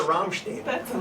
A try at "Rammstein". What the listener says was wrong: It's not Steen.